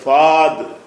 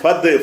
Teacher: அப்ப அந்த அலிஃபை வந்து உச்சரிப்பு இல்லாம ஆக்கி ஃபத்ன்னு தான் சொல்லணும்